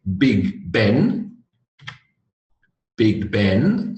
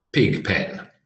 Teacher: B notice by the way an example of voiced and unvoiced you're doing the same thing with your mouth but one is with the vibrations in the throat